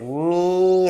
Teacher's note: 코로 공기를 내보내야만 소리를 낼 수 있습니다. 특히 미음 할 때, 미 할 때 이렇게 딱 닫아버리면 소리가 안 나죠. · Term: 비음